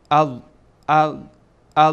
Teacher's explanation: تارهای صوتی از هم باز میشه و خیلی زیاد باز نمیشه به یک حدی باز میشه که صدا خارج بشه